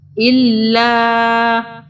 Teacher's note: چھوٹی مد آ رہی ہے اس لیے 3 الف کے برابر ذرا کھینچیں گے